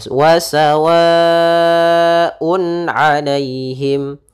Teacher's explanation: maka suara tanwinnya atau suara Nun sukunnya harus dibaca dengan jelas maka di sini wasawaun alaihim tanpa adanya ee tahanan di gunahnya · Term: izhar halqi